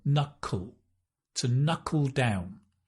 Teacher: no fun to pronounce it's the dark L